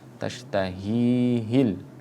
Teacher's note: huruf ha itu berada di adnal halki, tenggorokan yang paling pangkal, yang paling bawah, berjajar dengan hamzah. Maka harus diperhatikan jangan ha-nya dibaca ha.